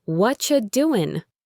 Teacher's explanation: What are you doing can become what you doing. The what are you part gets squeezed into whatcha.